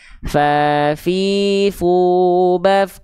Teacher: ujung gigi seri atas kita kita sentuhkan dengan bibir bawah bagian dalam yang basahnya